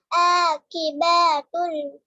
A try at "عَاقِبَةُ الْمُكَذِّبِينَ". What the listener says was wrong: खींच क्यों रहे हैं फतह को फतह नहीं खिंचाता है फतह कसरा जमा को जल्दी पढ़ते हैं